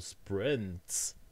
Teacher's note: sprints oscillates in the sonority, but it still has one distinguishable peak